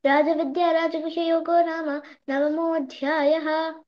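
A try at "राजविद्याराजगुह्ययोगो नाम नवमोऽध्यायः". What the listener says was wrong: మహాప్రాణాలు అక్కడక్కడ లైట్ గా పలికావు అదిఒక్క మిస్టేక్ తప్ప ఇంకెక్కడ ఏ మిస్టేక్ లేదు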